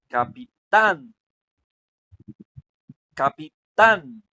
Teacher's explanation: Capitán, tan es la que suena más. Entonces, por lo tanto, tan viene siendo la sílaba más fuerte y además está en el último lugar, es la última de la palabra. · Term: sílaba tónica aguda